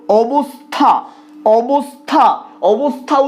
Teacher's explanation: উচ্চারণের ক্ষেত্রে যখন দন্তস্ব আসছে আমরা কিন্তু জিভটা দাঁতে না ঠেকিয়ে উচ্চারণ করতে পারবো না